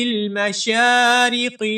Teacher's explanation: أُقْسِمُ بِرَبِّ الْمَشَارِقِ، مشارقی میں میم کے بعد جو شین ہے، اس شین کے اوپر کھڑی زبر ہے، شین کو ہم 1 الف کے برابر لمبا کر کے پڑھیں گے